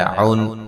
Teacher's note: نون تنوین کا اظہار ہے، غنہ نہیں کریں گے